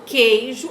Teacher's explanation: Esse U aqui é dígrafo, lembra? Porque quando eu falo queijo, eu não pronuncio o som do U